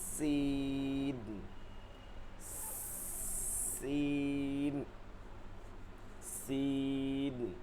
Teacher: যেমন মাছের তেলের মধ্যে দিলে একটা সিরসির করে শব্দ আসে ঠিক ওভাবে আসতে হবে চিকন করে সিন সিন সিন এরপরে যেটা আছে এটা হচ্ছে তালেব ও স